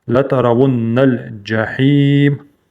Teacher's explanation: Удвоенное нун. Соединяем с лам.